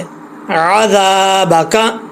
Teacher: आइन को क्लियर करना है, हमज़ा नहीं पढ़ना